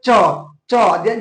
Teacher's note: जैसे च बोलते हैं ना तो जो अपना जीभ होता है वो उस पर तालु में चिपकता है, ठीक है। च देखिए च, यानी कि तालु में क्या, जीभ आपका क्या होता है, ऊपर तालु में चिपकता है।